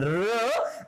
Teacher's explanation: and the active articulator is the tip of the tongue and the passive articulator is the back part of the teeth ridge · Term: पोस्ट एल्वियोलर